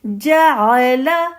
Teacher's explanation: حمزہ نہیں پڑھیں گی اس کو، عین، عین کے مخرج پہ آپ جائیے